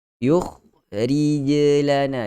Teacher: Jim ada, kha yang mati tidak ada lantunan. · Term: qalqalah